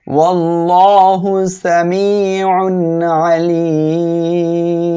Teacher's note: আইনটা উচ্চারণের সময় গলাটা একটু চেপে উচ্চারণ করবেন